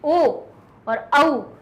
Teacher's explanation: तो ये हो गया कंठ, कंठ से ध्वनि निकली ओ और औ, तो हमारे ओ बोलने में ध्वनि तो कंठ से निकल रही थी, लेकिन हमारे होंठ ओ हो गए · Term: कंठ ओष्ठ